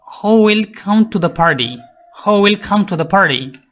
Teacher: উইল, এটা আনস্ট্রেসড because it's auxiliary verb মডেল। Come, main verb stressed. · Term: Sentence stress in a question